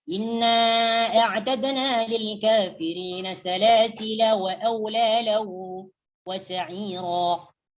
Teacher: Untuk perkataan salasila apabila mau diwasal maka dibaca pendek. Jadi alifnya tidak berfungsi.